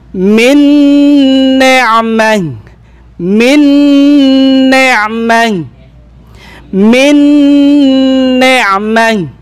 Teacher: Idgham kamil kompletong idgham, ganap na idgham na mayroong gunna · Itong si nun, yung kanyang that, pati na rin yung kanyang sifa, ay pumasok siya dito sa pangalawang nun. Kaya natawag na kamil, kompleto na idgham. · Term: Idgham kamil bigunna, idgham kamil bigunna